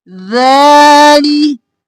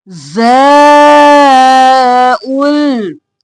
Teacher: ये ज़ा सीटी की आवाज में सख्ती से अदा होगा